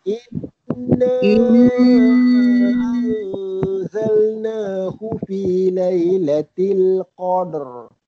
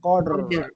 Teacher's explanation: Kita nak lepaskan, nak raikan huruf ra tu. Huruf ra sifat dia takrir, dia bergetar.